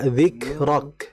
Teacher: dalam pengucapan huruf kaf ini kita harus fokus pada sifat hamesnya. Nah, kemudian kan ada yang berpendapat bahwa bilamana huruf kaf ini berada di akhir zikrok gitu ya, ada yang mereka itu membacanya itu disyiddahkan dulu jadi berhenti baru hammas.